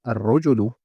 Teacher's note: when I said al-rajulu, I didn't pronounce that lam. I didn't say al-rajulu.